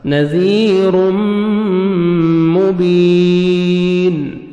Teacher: حروف یرملون میں سے میم ہے، آپ نے ادغام کرنا ہے غنہ کے ساتھ